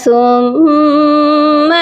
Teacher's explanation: میم مشدد ہے، میم مشدد پر ہمیشہ غنہ کرتے ہیں